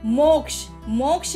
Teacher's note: मोक्ष शब्द में मो पर जोर दिया गया है, यही बलाघात है।